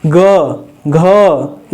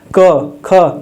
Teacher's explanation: हम लोग घोष वर्ण बोलते हैं जैसे ग बोलिएगा ग घ इसको बोलने में गूंजता है तो यह हो गया घोस और जिसको बोलने में क ख नहीं गूंजता है उसी को आघोष